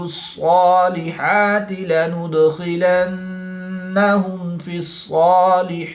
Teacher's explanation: صاد اور خا حروف مستعلیہ میں سے ہیں، تو ان کو پورا یعنی موٹا پڑھیں گے. نون مشدد میں غنہ آنی کر کے پڑھیں گے.